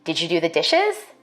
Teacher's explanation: For white speakers, we expect a rising tone in questions like these.